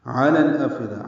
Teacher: عین وسط حلق سے ادا کریں گے جلدی